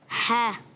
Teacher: आइन और हा अदा होते हैं हलक के दरमियान वाले हिस्से से।